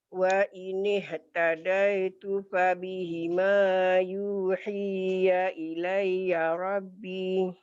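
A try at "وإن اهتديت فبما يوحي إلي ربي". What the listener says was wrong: Wa ini tadaitu fabima, bukan fabihima ya. Wa ini tadaitu fabima yuhi ilayya rabbi.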